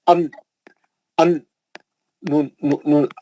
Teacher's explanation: और उसको करने का आसान तरीका क्या है, ये जो ऊपर के ये जो ऊपर के मसोड़े हैं, दांतों के पीछे एक सख्त हिस्सा रहता है, उसको मसोड़ा बोलते हैं। आपकी जबान की नोक आके या मसोड़े को लगती, जबान की नोक आके या मसोड़े को लगती, लगी तो नून निकलता